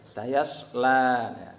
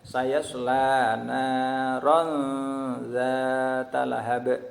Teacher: la-nya itu juga panjang, ya, la-nya panjang, itu panjangnya 2 harokat atau 1 alif, itu namanya mad harfi, ya, mad harfi.